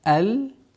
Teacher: Долгота в размере двух огласовок фатха.